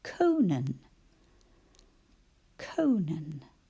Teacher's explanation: i had a long vowel sound in the first syllable right at the end and i had a short vowel sound in the second one